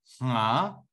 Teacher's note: the h readings come from voiceless nasals